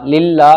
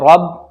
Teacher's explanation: را کے اوپر زبر ہے، را موٹا پڑھا جائے گا